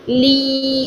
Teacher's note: زبان کا درمیان اوپر تالو کے پاس جا رہا ہے لیکن فوراً بالکل ٹچ نہیں ہو رہا